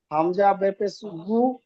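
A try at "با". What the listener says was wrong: বে না ভাই, বা বলবেন, বা।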